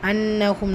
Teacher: நூன்ல முஷத்ததா குன்னா செஞ்சு ஓதணும்